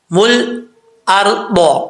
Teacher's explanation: جعل لکم الارض، اب یہاں پر لام ساکن ہے، اکثر لوگ لام ساکن میں کلکلا کر دیتے ہیں، کلکلا نہیں کرنا، بغیر کلکلے کے پڑھنا ہے